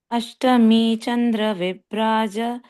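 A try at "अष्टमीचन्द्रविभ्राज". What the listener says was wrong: Yes, this bra also it has to be stressed, but practicing.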